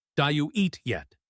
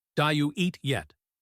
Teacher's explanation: The word did completely disappears and blends into you.